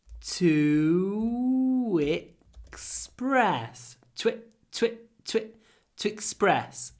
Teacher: When we say express, the stress is on the second syllable, so it's even more important to use connected speech.